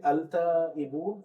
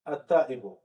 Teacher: So you see, the lam is not pronounced. So lam is not pronounced when it comes to hurufu mada, hurufu shamsiyya.